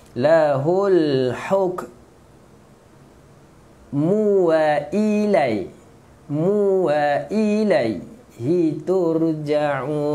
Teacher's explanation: Okey, lahul, masukkan lam. Lahul huruf ha tengah halkum